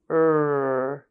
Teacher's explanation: touches the alveolar Ridge right where it meets your top teeth for ER the tip of your tongue curls back toward the roof of your mouth without touching it